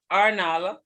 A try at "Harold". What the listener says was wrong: says to correct the H. In other words, you're supposed to pronounce the H. It means that you're not, that's why it says, to correct the H, removal fault. In other words, you're not supposed to remove the H sound.